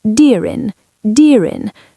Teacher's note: The R connects to the I. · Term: connection